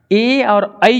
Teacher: ए और आई जो होता है आपका कंठ और तालु दोनों को ले लेता है। देखो ए और आई, ए तो कंठ और तालु, ए कंठ और तालु दोनों लेता है, तो ए और आई जो हो गया आपका कंठ तालु कहलाता है वो, क्योंकि दोनों चीजों को लेता है, तो ए आई कंठ तालु हो गया।